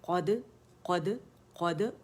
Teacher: زبان اوپر گئی جڑ سے، اور دال کے لیے فوراً نیچے آ گئی